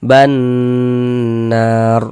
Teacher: di bagian ban itu suaranya itu kita tahan, kita panjang saja, kita gunnahkan. Banar. Naro dibaca panjang.